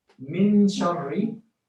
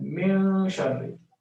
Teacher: The first one is without ikhfa, meaning with idhar, and the second is with ikhfa